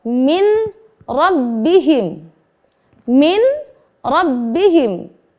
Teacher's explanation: ada nun sukun diikuti dengan huruf ra maka kita wajib membaca dengan Idgham melebur menjadi huruf saja yang terbaca huruf nun nya hilang melebur